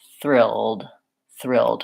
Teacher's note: when I'm saying the TH in the word thrilled, my tongue is already a little bit ready for that back R. It's tense and back.